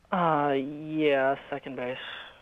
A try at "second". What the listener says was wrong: Second. Although every time he says second, it sounds like he's saying sucking.